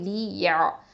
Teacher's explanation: இது வந்து ஐன் வந்து வசத்தல் ஹல்க நடுத்தொண்டை எழுத்து